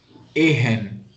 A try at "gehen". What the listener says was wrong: Arey, there is G at the.